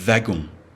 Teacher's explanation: The W is pronounced as a V.